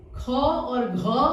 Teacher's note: इसमें श्वास वायु जो है वह तेज गति से निकला, तेज गति से, और अधिक तेज और अधिक बाहर निकला। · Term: महाप्राण